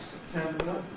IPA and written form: səpˈtembə (September)